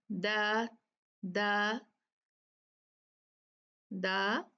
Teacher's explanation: आप मसूड़ों पे जरा थोड़ा सा टारगेट रखें और बोले द द द, और फिर द, जा रही है ना, यहां तक तो आ ही रही है, सो इट डजंट मैटर।